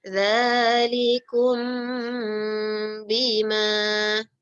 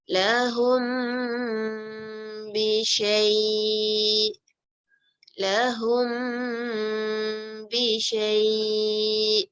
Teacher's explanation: Apabila dengan mim jumpa dengan ba kita tak rapat sangat. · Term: ikhfa syafawi